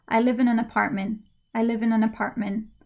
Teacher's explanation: the words that i stressed are the verb and the noun so these are the words that are important for the meaning · So for example, when I say I live in an apartment, I live is clear, apartment is clear, but I, in, and an, not so clear.